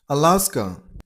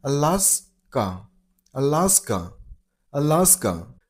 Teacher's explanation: Stress on the second syllable.